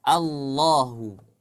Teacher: dari bunyi la menjadi lo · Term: tebal